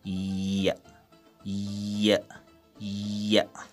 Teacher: these sounds tip of the tongue is against alveolar Ridge and front of the tongue is raised towards hard palate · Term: palatal sound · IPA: [j]